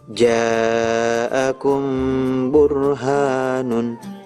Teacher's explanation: Ikhfa syafawi, setiap mim sukun bertemu dengan huruf ba dibaca samar disertai dengung